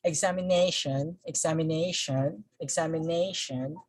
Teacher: So the stress here falls on the syllable nay, since the word ends with shon.